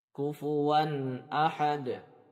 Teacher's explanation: Diberikan sedikit dengung dan jangan sampai memanjangkannya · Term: izhar